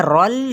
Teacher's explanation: अज रोल, ये जीम पे कलकला यानी हिलाना है। रोल, रॉ की ज़बर को पुर पढ़ते हुए लाम को भी हिलाना नहीं है, मिलाना ज़रूर है लेकिन हिलाना नहीं।